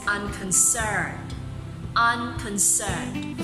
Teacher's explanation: So the stress is found in the last syllable.